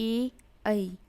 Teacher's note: ए आवाज़ गले से भी आ रही है और साथ में तालु भी टच हो रहा है